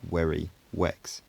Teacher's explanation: the v and w phonemes are merged towards the w end of the spectrum, and the words like very and vex are pronounced like werry, wex